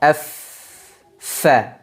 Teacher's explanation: gigi depan bagian atas inilah yang kemudian nanti akan menyentuh ke bibir bawah bagian dalam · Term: huruf Fa